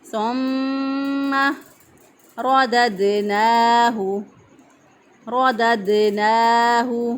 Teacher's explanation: میم مشدد پر ہمیشہ گنہ ہوتا ہے، ایک الف کے برابر گنہ کی آواز کو ٹھہراتے ہوئے ادا کریں گے · را جو ہے اس کو پر پڑھیں گے، موٹا پڑھیں گے کیونکہ را کے پر زبر ہے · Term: را کو موٹا پڑھا